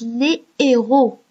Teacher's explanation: Par exemple, si vous cherchez le mot « héros » dans le dictionnaire, vous allez trouver le mot avec un astérisque et qui va vous montrer que vous ne dites pas, vous dites les héros, vous ne faites pas la liaison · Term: H aspiré